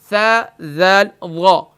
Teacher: زبان کا سرا اور اوپر کے دانتوں کے اندرونی کنارے سے ادا ہوتا ہے۔ زبان کا سرا اور اوپر کے دانتوں کے اندرونی کنارے سے، یعنی یہ زبان کا سرا ہے نوک، اور اوپر کے دانتوں کے اندرونی کنارے سے ادا ہوتا ہے، حروف لثویہ کہلاتے ہیں۔